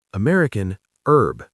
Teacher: American, herb. The H is completely silent. British, herb.